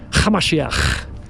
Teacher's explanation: You have to add a little bit of a throaty little ch.